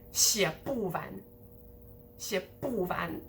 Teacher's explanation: And usually the van here would get stressed, but it's a bit less stressed here because when you emphasize a morpheme, in other words, the 不 here is emphasized, the words around it, more specifically behind it, like after it, get de-stressed a bit. It tends to happen because you want to draw emphasis to that specific morpheme 不.